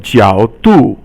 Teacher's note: 角 is third tone, and 度 is fourth tone